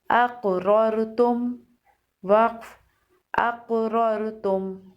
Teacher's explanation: حمزہ قاف زبر اق، را را زبر رر، اقرر، تا میم پیش تم، اقررتم، وقف اقررتم۔ قاف کو موٹا پڑھیں گے، قاف حروف مستعلیہ میں سے ہے اور قاف پر قلقلہ بھی ہوگا